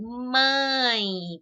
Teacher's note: tá vendo que o som mãe passa pelo nariz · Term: nasalizadas